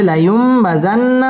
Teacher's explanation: নুন সাকিনের বামে বা আসছে ইকলাব মিম দ্বারা পরিবর্তন করে পড়তে হবে